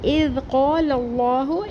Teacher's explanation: اذ حمزہ کی زیر کو ذال ساکن سے ملا کے پڑھیں گے، ذال ساکن نرمی سے پڑھیں گے